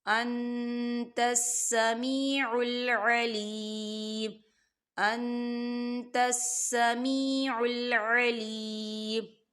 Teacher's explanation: رَبَّنَا تَقَبَّلْ مِنَّا إِنَّكَ، نون مشدد ہے، غنہ ہوگا، إِنَّكَ أَنْتَ السَّمِيعُ الْعَلِيمُ، انتس، یہاں دیکھیں نون ساکن ہے، نون ساکن کے بعد تا آ رہا ہے اور تا جو ہے اقفا کا ورڈ ہے، تو یہاں پر اقفا ہوگا، نون ساکن کی آواز کو ہم ناک میں چھپائیں گے